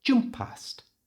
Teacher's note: we won't pronounce the first P so it's jum past in one breath jum past now listen